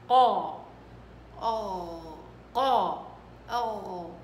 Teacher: فعندك القاف بدك تنتبهي انها قرع، قرع قوي، قرع قوي